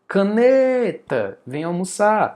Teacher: a sílaba mais forte é o né, proparoxítona.